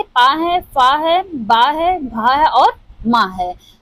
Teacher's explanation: ओष्ठ से उच्चारित होने वाले प वर्ग। प वर्ग के अंतर्गत जितने भी आते हैं वो हमारे ओष्ठ से उच्चारित होते हैं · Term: ओष्ठ ध्वनि